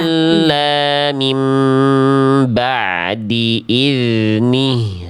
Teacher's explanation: Suara zal itu betul-betul mengalir, deras.